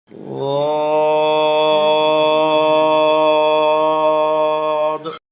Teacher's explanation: জিহ্বার গোড়ার কিনারা উপরের মায়ের দাঁতের গোড়ায় লাগবে, মোটা হবে